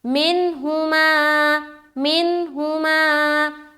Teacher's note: नून साकिन है और नून साकिन के बाद हर्फ हा आ गया तो यहाँ पर फिर इजहार करेंगे